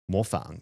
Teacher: I've been saying it for fourth tone and it's third tone.